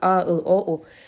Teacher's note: A deyəndə, ı deyəndə dil arxaya doğru gedir. O deyəndə dil arxaya doğru gedir. Ona görə də bunun adı dil arxası, yəni qalın saitlərdir. · Qalın saitlər boğazdan çıxır. A deyəndə, ı deyəndə dil arxaya doğru gedir. O deyəndə dil arxaya doğru gedir.